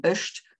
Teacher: the form ösht without the schwa at the end